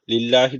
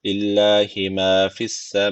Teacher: Allah lafzı ince okunacak. Çünkü öncesindeki harf şu başındaki lam harfi ve harekesi altta.